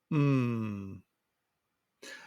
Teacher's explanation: To make the sound P, begin with this M sound. The M sound, you have your lips closed. The voice will come from your throat and go through your nose.